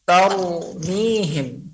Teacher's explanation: ra itu keluar daripada ujung lidah menempel gusi, bukan tengah lidah. Jadi taru. Lidah seperti menyongket gini.